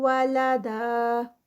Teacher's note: تنوین ہے اور اس کو جب ہم روکتے ہیں تو الف مد کی طرح روکی جاتی ہے، اس لیے اس کے بھی 2 کاؤنٹس